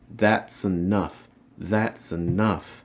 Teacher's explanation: you're also stressing enough so make sure you're raising that pitch there